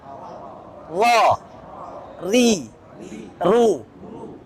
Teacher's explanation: Itu ro Indonesia, bukan ro Arab gitu. Jadi ro Arab itu nggak boleh ada getaran kasar. Getarannya halus.